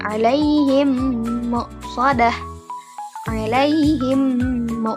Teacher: ada dengung dan ada peleburan antara mim yang mim sukun dengan mim selanjutnya, mim yang berharakat selanjutnya. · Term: idgam mimi, idgham mimi